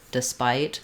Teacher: despite is unstressed on the first syllable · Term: schwa